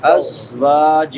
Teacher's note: اظہار ہوگا من ازواج، از زا سختی سے ادا ہوگی، ازواج، واؤ کے بعد الف مدہ ہے، ایک الف کے برابر لمبا کریں گے